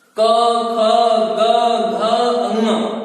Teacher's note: का वर्ग की सभी ध्वनियों का उच्चारण स्थान है कंठ।